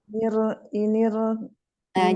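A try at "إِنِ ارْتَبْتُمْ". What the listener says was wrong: Jangan inir, tidak inir, tidak terangkat lagi, biar di bawah aja. Inir.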